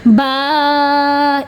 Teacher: अलिफ हो, अलिफ से पिछले हरफ पे ज़बर हो, अलिफ मद्दा कहलाएगा। 1 सेकंड तक वो अलिफ खींच के पढ़ा जाएगा।